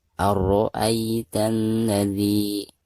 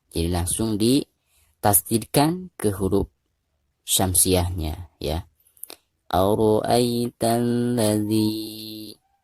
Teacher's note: Ara'aitan ladzi, dari ta langsung ditasydidkan ke huruf lam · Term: alif lam syamsiah